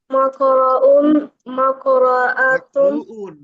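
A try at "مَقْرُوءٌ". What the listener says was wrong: মাকরুউন, শোনো মাকরু পড়ো কেন? এখানে না মানসুরুন, আগের হরফে টান আছে, তাহলে মাকরুউন। হুম, বলো বলো মাকরুউন মাকরুউন মাকরুআনি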